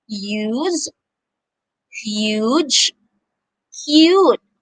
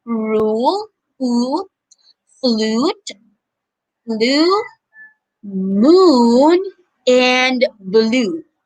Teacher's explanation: the long vowel u has two sounds one with you and one with ooh